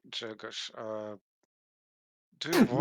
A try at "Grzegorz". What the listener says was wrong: not Grzegorz. Grzegorz. There's a G in the front.